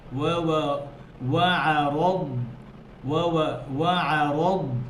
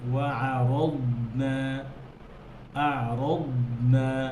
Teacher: وعرضنا দদ, و... দদের মধ্যে হামস নাই, বাতাস বের করা যাবে না দদ থেকে। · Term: দদ হরফ